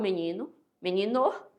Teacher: eu falo menino, eu troco logo o E pelo I